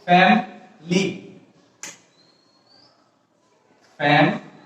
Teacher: এখানে সিলেবল ছিল, আমরা যখন এই ফ্যামিলি শব্দটা উচ্চারণ করি তখন সিলেবলগুলি তিনটা, ফ্যামিলি. কিন্তু যখন আমেরিকানরা এই শব্দটা উচ্চারণ করে তখন সেখানে ফ্যামিলি বলে না, তখন দুইটা সিলেবল থাকে. দুইটা সিলেবল হচ্ছে কি, ফ্যামিলি. · এখানে উচ্চারণটা, ভাওয়েলের উচ্চারণটা এখানে ড্রপ করা হয়েছে. ভাওয়েলের উচ্চারণটা ড্রপ করে F A M M L Y.